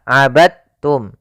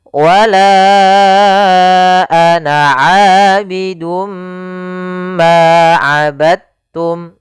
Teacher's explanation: cara membacanya yaitu masukkan huruf dalnya kepada huruf ta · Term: diidgamkan